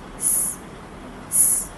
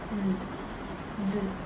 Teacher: The sounds produced by alveolar fricatives are the sound s, s, as in snake and sit, And the second sound is z, z, as in zoo and zebra. The sound s is a voiceless alveolar fricative because it doesn't produce any vibration when we pronounce it, while the sound z is a voice alveolar fricative because it produces vibration when we pronounce it.